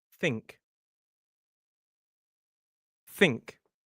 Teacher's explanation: Make sure it's just a light kind of blast of air. Your vocal cords aren't vibrating. It's like a gas leak from a pipe.